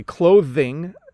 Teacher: And then when I say clothing, you actually hear the TH sound coming out.